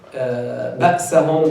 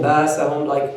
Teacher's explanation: Some of the Arabs did not pronounce Hamza. They always make tasheel for the Hamza. Or they drop it completely.